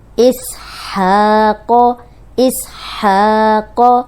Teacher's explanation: اس سیٹی والا ہے، ہا حروف حلقی ہے، اس پہ کھڑی زبر ہے، دو حرکات لمبا کریں گے۔ قوف موٹا ہے، اس پہ پڑی حرکت زبر ہے تو اس کو لمبا ہونے سے بچائیں گے۔